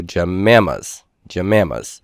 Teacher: for pajamas we had metathesis JEP Amma's K pajama Japan ah the J and P switched places and then assimilation where the P fully assimilates to the M · assimilation where the P fully assimilates to the M that it's near